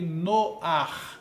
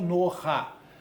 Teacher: Uma vogal adicional é inserida furtivamente e vai alterar um pouco a pronúncia. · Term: patar furtivo